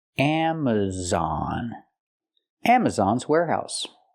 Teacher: we have a stress on the first and third syllable